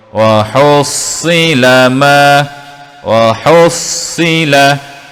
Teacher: Cara sebutannya kita perlu sebut dengan tebal, tidak boleh kita sebut dengan bunyi si. Wa hussi itu telah menjadi huruf sin. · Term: sad bawah si